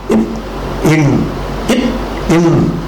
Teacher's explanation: நாக்கின் நுனி அன்னத்தின் அன்னம்னா மேல்வாய் மேல்வாயின் நுனியை பொருந்துவதால் பிறக்கின்றன